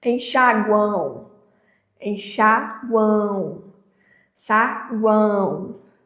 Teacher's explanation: o nasal a gente vai ter esse som ressoando pelo nariz também